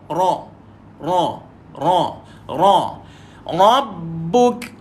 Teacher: Lidah kita ni yang main peranan. Dia ada gandaan ataupun dia macam bergetar.